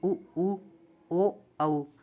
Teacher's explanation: वृत्ताकार स्वर वे स्वर है जिनका उच्चारण करते समय हमारे ओष जो है वो गोलाकार हो जाते हैं गोल हो जाते हैं